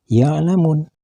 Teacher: Dan kalimat ya'lamuna, bila dihentikan membacanya maka harus dibaca ya'lamun panjang 3 alif atau sama dengan 6 harkat karena kedudukannya berubah menjadi mad arid lisukun